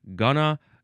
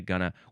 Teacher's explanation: going to gets mushed to gonna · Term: contraction pronunciation